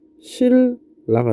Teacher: 자, 신라 같은 경우는 앞에 있는 니은이 뒤에 있는 리을의 영향을 받아서 리을로 바뀐 거겠죠